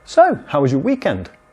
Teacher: You have so with high intonation to ask a small talk question.